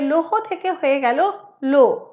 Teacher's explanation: পদের শেষে হ লোপ পেয়ে গেছে